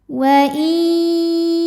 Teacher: huruf sin cara membacanya mim dibunyikan dengan izhar atau jelas waamsas sinnya punya sifat namanya shofir artinya berdesis seperti suara ular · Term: sofir